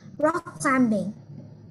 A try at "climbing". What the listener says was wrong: Nhớ là chữ M con nhé. Rock climbing. Chữ B ở đây là âm câm. Mình không đọc là climbing. Là climbing.